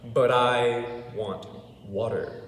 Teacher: it becomes the flap sound the d d d and there's a reason there is a